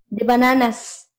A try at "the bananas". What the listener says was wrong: Que suene la S. Recuerde, tiene que sonar la S. Me estaba saliendo, pero hay que dejar claro esa regla.